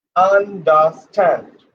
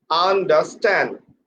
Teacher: put pressure on the last syllable